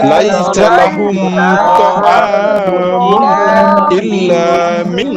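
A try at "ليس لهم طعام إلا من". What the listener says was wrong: মিং এটা ভাঙা হবে না, মাঝে একসাথে হবে। মিং ধরে রাখতে হবে।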